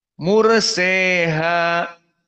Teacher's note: Maka ra sakinah sebelumnya dhammah mur dalam keadaan at-tafkhim. Mursaha dan mursa dalam keadaan alif layyinah, maka dia dibaca dengan al-imalah al-kubra.